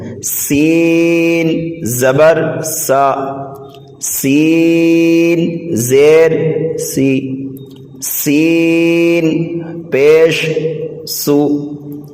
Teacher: ان کو سیٹی کی طرح تیز آواز نکال کر پڑھنا ہے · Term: حروف صفیریہ